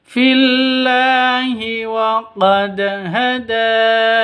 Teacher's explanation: Wa qad dalnya harus dipantulkan. Kenapa? Karena bacaan qalqalah, dalnya dal sukun.